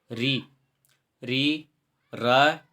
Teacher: मूर्धा का जो सूत्र है रीटु रसाणाम मूर्धा, जिसमें र वर्ण आता है तो रे वर्ण का उच्चारण स्थान क्या होगा? मूर्धा होगा।